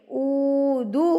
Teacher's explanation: او کو ہم نے کھینچ کے پڑھنا ہے کیونکہ واؤ ساکن سے پہلے پیش ہے، تو ہم اس کو کھینچ کے پڑھیں گے، اودہ، ہاں الٹا پیش آپ کا کیا ہوگا؟